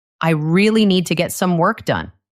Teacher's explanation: A native speaker will put the stress on. Really, need, work, and done. The little words in between. They will be very fast and unstressed.